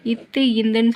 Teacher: நாவினோட நுனி வந்து மேல்வாய்ப்பல்லோட அடிப்பகுதி வந்து டச் பண்ணுது. அப்போ இத்து இந்துங்கிறது வந்து நாவினோட நுனியும் மேல்வாய்ப்பல்லையும் அடிப்பகுதியும் வந்து சேரனால பிறக்குது.